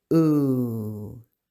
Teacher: The vowels are not pronounced twice, like o or oo. They are pronounced longer.